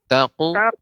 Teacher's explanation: Qaf ini diantara huruf isti'la, jadi tebal Nek pengucapan qalqalahnya.